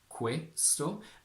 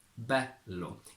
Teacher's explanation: In Italian, for example, you have both a closed e, questo, and an open e, bello.